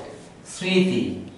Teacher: শুরুতে যদি মফলা থাকে আমরা জানি সেই ময়ের উচ্চারণ হয় না, কিন্তু সেই ময়ের পরিবর্তে আমার চন্দ্রবিন্দু সাহায্য নিতে হবে এবং আমাকে নাসিক্য করতে হবে। শ্রীতি এই উচ্চারণটা যদি আমি করি তাহলে অবশ্যই চন্দ্রবিন্দু দিয়ে উচ্চারণটি করতে হবে।